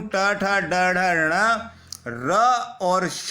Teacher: हमारे जो ऊपर वाले दांत है, ऊपर वाले दांत के साथ लगने वाला जो खुरदरा भाग है उसे मुर्दा कहते हैं। जब हम इन वर्णों का उच्चारण करते हैं तो हमारी जीभ ऊपर वाले दांतों के साथ वाले खुरदरे भाग मूर्धा को स्पर्श करती है, इसलिए इन वर्णों को हम मूर्धन्य वर्ण के नाम से जाने जाते हैं।